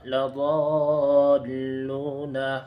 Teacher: لضالون میں مد لازم ہوگا، کیونکہ حروف مدہ کے بعد والے حرف پر تشدید آ رہا ہے